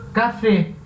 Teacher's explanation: Então, sempre que for uma palavra aguda que termine com N, S ou vogal, essa palavra vai ter acento nessa sílaba tônica. Nessa última sílaba é a sílaba tônica de uma palavra aguda.